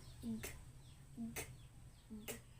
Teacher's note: ang ibabaw ng punong dila ay dumidikit sa velum o malambot na bahagi ng ngalangala